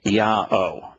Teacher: In every single one of them, the wa is pronounced as an o.